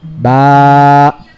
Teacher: we prolong the elongation by 2 harakats. 2 harakats is almost 1 second